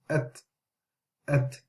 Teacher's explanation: If you notice with the ta, there's a slight bit of air coming out. So what we do, we imprison the sound of the ta, and then we imprison the air.